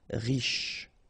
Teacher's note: Final E not really pronounced. So SH is the last sound.